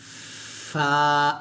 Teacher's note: নিচের ঠোঁটের পেট সামনের উপরের দুই দাঁতের আগার সঙ্গে লাগিয়ে ফা উচ্চারণ করতে হবে নরম করে। যেমন ফা, ফাটা যখন উচ্চারণ করবেন অবশ্যই একটা বাতাস বের করবেন, ফা, এভাবে।